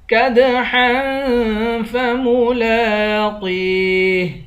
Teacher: کدحا فملاقیہ، لام پر کھڑا زبر ہے، اس کو 1 الف کی مقدار کھینچ کر پڑھیں گے۔ قاف کو یا کے ساتھ ملا کر یا کو 1 الف کی مقدار کھینچ کر پڑھیں گے، قاف کو موٹا پڑھیں گے